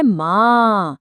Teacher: स्वर की ध्वनि को मुंह के साथ साथ नाक से भी निकालना है। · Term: चंद्र बिंदु